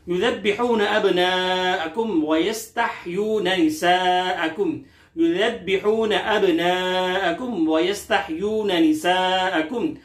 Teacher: युज़ब्बिहून के दाल को नरमी से, बा को सख्ती से, तशदीद की वजह से अब्नाअकुम यहां मद्द मुत्तसिल, अलिफ मद्दा के बाद हमजा उसी कलमे में है। · वयस्तहयून के हा को हल्क के दरमियानी हिस्से से अदा करेंगे